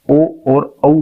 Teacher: जब आप ओ और औ बोलोगे तो इसमें कंठ का भी उपयोग हो रहा है और ओठ का भी उपयोग हो रहा है, इसलिए ओ और औ को आप कंठोस्थ स्वर की श्रेणी में रखते हैं।